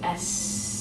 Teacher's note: put your hand on your throat and make s there is no vibration in your throat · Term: unvoiced